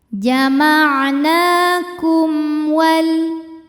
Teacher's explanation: Ada hukum izhar syafawi sebab ada mim sukun menghadapi huruf selain mim dan ba yaitu huruf waw. Cara bacanya mim sukun dibaca dengan jelas atau disebut dengan izhar.